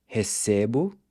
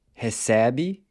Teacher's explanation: recebo, pronounced with a closed E, then recebe and recebem are pronounced with an open E